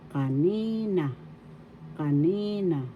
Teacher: Second syllable has the accent, kanina, so that's how you pronounce it